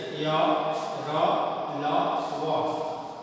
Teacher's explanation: अंतःस्थ व्यंजन वैसा व्यंजन वर्ण जिसके उच्चारण स्वर और व्यंजन के मध्य होता है। इनका उच्चारण करते समय जीभ मुख के किसी अंग को स्पर्श नहीं करती।